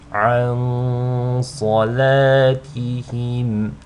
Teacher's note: you want to hold on to the nasal sound on the noon sakina for just 2 counts because of the sad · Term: ikhfa